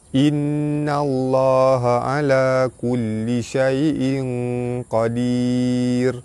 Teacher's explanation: Nun sabdu hukum dia wajibul gunnah, ditekan dan ditahan sedengung 2 harakat. Baris atas bertemu lam jalalah dibaca tebal serta panjang 2 harakat. · Tanwin bertemu dengan qaf, hukum dia ikhfa hakiki, dibaca sama-sama tebal serta dengung 2 harakat